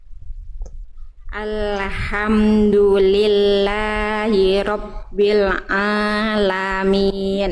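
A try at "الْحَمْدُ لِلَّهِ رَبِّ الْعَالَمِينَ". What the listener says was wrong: Oke, nanti disempurnakan lagi ainnya di huruf ro, nggak apa-apa, huruf-huruf tebal tinggal ditebalkan lagi, jadi masih kurang tebal pangkal lidahnya. Coba Bunda lafalkan huruf ro gimana? Ro. Nah, jadi huruf tebal itu kenapa dia bisa tebal? Karena dia terangkat bagian pangkal lidahnya. Nah, jadi diangkat bagian pangkal lidahnya. Ro. Ro. Ro.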